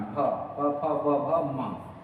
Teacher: इनका उच्चारण स्थान ओठ होने के कारण इन्हें ओष्ठ्य वर्ण कहते हैं